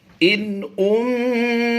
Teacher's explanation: नून साकिन के बाद हमज़ा हुरूफ़ हल्की से आया है, यहाँ पर हमने इज़हार करना है। उम्महातुहुम, मीम साकिन के बाद यहाँ पर देखिए बा और मीम के अलावा हरफ आया है, तो यहाँ पर हमने इज़हार शफ़वी करते हुए बग़ैर गुन्ना के पढ़ना है।